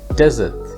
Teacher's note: means a dry area of land usually covered with sand and for this word you place the stress on the first syllable